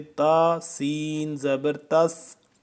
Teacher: سین کو سیٹی کی آواز سختی سے